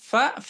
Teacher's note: ujung gigi seri atas bertemu dengan perut bibir bawah itu makhrajnya Fa sifatnya dia HAM dan Rakha HAM dan Rakha berarti mengalir nafasnya